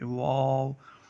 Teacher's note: واو دونوں ہونٹوں کی گولائی سے ادا ہوتا ہے، یعنی ہم جب دونوں ہونٹوں کو گول کر کے پڑھیں گے تو واو ادا ہوگا، یہ واو کا مخرج ہے، واو۔